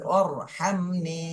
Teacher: মিম সাকিনের পরে বা আর মিম এখানে নেই, এজন্য স্পষ্ট করে পড়তে হবে। হামিম জবর হাম, নুন ইয়া জের নি, জেরের বামে জজমালাইয়া মাদের হরফ এক আলিফ টেনে।